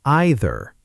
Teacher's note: in British English, it's often pronounced either starting with more of an I sound.